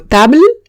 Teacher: Y paro en la L, digo table y ya está. No pronuncio la E.